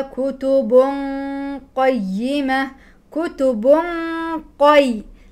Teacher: كيف ذهبت الى مخرج القاف فسددت المخرج لان اصل القاف مسدود المخرج